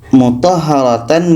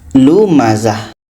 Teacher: tamarbutah, tanwin atas, tanwin bawah, tanwin depan ketiga-tiganya itu menjadi huruf H. Huruf H yang berbaris mati.